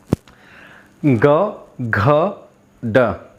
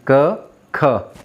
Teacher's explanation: तीसरा, चौथा, पांचवा ये सभी सघोष होते हैं, अर्थात हमारे स्वर तंत्रियों में कंपन होती है।